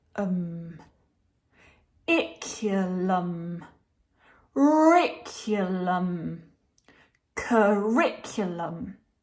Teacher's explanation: So you can hear that the second syllable is longer and louder than the other syllables, the rick. We're making the voice more intense and we see a pitch change on that prominent syllable.